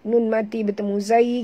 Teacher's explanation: nun mati bertemu zai, kita kena sorokkan bunyi nun ke dalam huruf zai disertai dengung. Ya, dua harakat, ikhfa haqiqi.